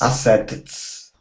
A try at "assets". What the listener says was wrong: Now, when we pronounce this TS, okay, we don't want to finish that T sound. So what you're saying is assets. Okay, it's assets. It's together.